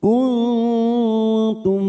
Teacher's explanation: mim sukun tum dibaca jelas tanpa mendengung, namanya idhar safawi